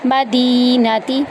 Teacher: اقصل مدینتی، میم کو ہم آرام سے پڑھیں گے، اس کے اوپر زبر ہے، دال یائی مدہ ہے، اس کو ہم 1 الف کے برابر لمبا کریں گے، دی کو لمبا کریں گے، مدینتی۔